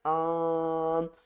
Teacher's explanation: نون کی آواز کو چھپا کر پڑھنا ہے، ظاہر نہیں کرنا، ان بھی نہیں کرنا اور ان گھنا بھی نہیں کرنا، ہم نے چھپا کر پڑھنا ہے، آن۔ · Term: اخفا